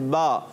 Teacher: हमारा होंठों का गीला हिस्सा, जो तर हिस्सा होता है, वो इस्तेमाल होता है, जैसे बा।